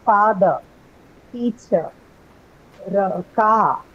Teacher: so r as you see when see in English no usually when you have the r sound at the end of the word it's not articulated meaning it's not pronounced